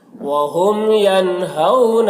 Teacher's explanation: وہم، میم میں اظہار شفوی ہو رہا ہے